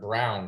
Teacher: The word brown has a consonant blend, and then it's got a diphthong, a vowel digraph diphthong, which would be pretty far down in the instructional sequence.